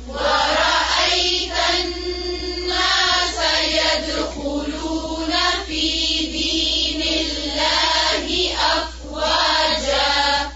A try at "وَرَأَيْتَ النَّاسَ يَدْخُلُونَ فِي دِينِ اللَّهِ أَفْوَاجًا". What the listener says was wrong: فی دین اللہ، سب جتنی بھی زیر ہے اس کو اور باریک کریں.